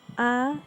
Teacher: Makhraj huruf ain terletak pada bagian tengah tenggorokan atau katup pangkal tenggorokan. Adapun cara mengucapkannya seperti huruf a yang disertai oleh tekanan.